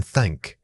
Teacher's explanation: We will look closely at the theth sounds, the voiced sound as in this and the unvoiced sound as in thank. To create the unvoiced thank, gently place your tongue between your teeth and blow air over it like a careful whisper.